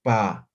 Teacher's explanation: Entonces, juntamos nuestros labios, por eso es bilabial